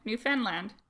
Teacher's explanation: It's called Newfoundland and Labrador, and they both get final stress.